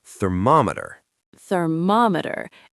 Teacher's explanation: Many people want to say thermometer, but the stress, the strong part of the word, is on the second syllable